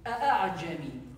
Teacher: We studied that the hamza and the ain they come from the throat.